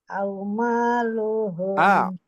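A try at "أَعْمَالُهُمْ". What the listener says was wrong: Disukunkan. A'maluhum waridwanun. Gabung.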